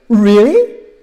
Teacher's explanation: the tune is high, low, high